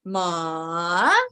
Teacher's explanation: it starts from low to high